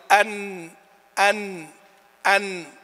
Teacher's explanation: والنون من طرفه تحت جعله يعني للأمام قليلا. إذن مخرج النون من طرف اللسان بينه وما بين ما فوق الثنايا